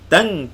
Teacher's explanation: Bunyi kaf tu lagi kuat daripada dengung. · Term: ikhfa haqiqi